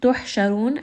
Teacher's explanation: ha is going to be from the middle of the throat